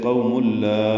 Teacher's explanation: تنوین کے بعد لام آنے کی وجہ سے قوم لا ادغام کامل ہے، میم لام سے ملا دیں گے. لا الف مدہ ہے، دو حرکات لمبا ہے.